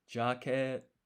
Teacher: The consonant in to is T, so the T is a bit sharper than it would be otherwise.